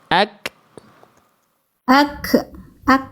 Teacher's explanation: Tapi untuk huruf kaf berupa percikan saja, terpercik saja. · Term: hams